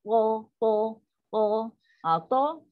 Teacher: To, pakai lidah naik, lidah kita melengkung. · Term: istilah